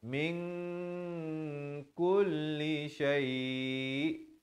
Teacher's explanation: Kemudian min samarkan di sini ikhfa hakiki daripada min asalnya nun baris mim baris kasrah bertemu nun bunyi min, tapi bila datang kaf jadi ikhfa di sini jadi samar 2 harakat